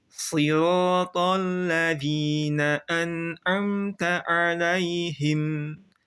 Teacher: Si tebal, ro tebal, to tebal. Alladzi alif lamnya jangan tebal, zi tipis, jangan tebal juga. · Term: huruf tebal tipisnya